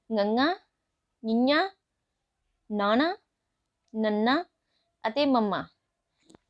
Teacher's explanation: ਮਮ ਹਨ ਅਸੀਂ ਬੋਲ ਕੇ ਜਦੋਂ ਇਹਨਾਂ ਨੂੰ ਦੇਖਦੇ ਹਾਂ ਤਾਂ ਮਹਿਸੂਸ ਹੁੰਦਾ ਹੈ ਕਿ ਆਵਾਜ ਥੋੜੀ ਜਿਹੀ ਨੱਕ ਦੇ ਵਿੱਚੋਂ ਹੋ ਕੇੇ ਆਉਂਦੀ ਹੈ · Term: ਅਨੁਨਾਸਕੀ ਵਿਅੰਜਨ